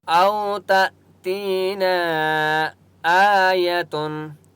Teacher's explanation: نون الف مد زبر نا، نون کے اوپر چھوٹی مد ہے اس لیے نون کو 3 سے 4 الف کی مقدار کھینچ کر پڑھیں گے۔ او تأتینا آیتن، حمزہ کے اوپر کھڑا زبر ہے، ایک الف کی مقدار کھینچ کر پڑھیں گے۔